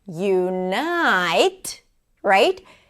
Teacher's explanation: In the word unite, the night is the primary stress.